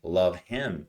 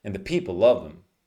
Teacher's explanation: you want to link it together and drop the H.